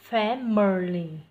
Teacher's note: trọng âm rơi vào âm thứ nhất này, hai âm còn lại thêm dấu huyền